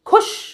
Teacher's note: तो खुश में ऐसे ऊ जैसा साउंड नहीं आता। तो खु, खु, श और बू, तो हो गया खुशबू।